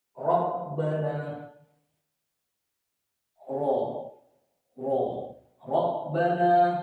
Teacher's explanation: di dalam ro fathah ini, walaupun itu fathah biasa maupun tasydid maupun tanwin, tetap dibaca tafkhim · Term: ro tafkhim